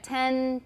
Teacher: Alveolar. So, we're just touching the alveolar ridge for ten cuz there's no th there to make us want to stick out our tongue